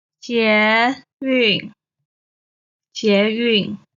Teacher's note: 捷 is the second tone. 运 is the fourth tone.